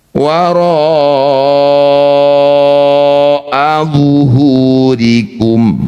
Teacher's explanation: Ro yang bertanda layar panjangkan 6 harokat. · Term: mad wajib muttasil